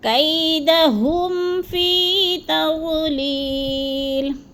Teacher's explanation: اب لی کو بھی تھوڑا سا کھینچ جانا ہے، کیونکہ ادھر یا مدہ ہے، یا ساکن سے پہلے لام کے نیچے زیر آ گیا ہے، تو یا مدہ۔